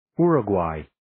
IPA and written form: 'jʊrə,gweɪ (uruguay)